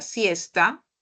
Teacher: con la palabra siesta sí que corresponde ahora al fonema alveolar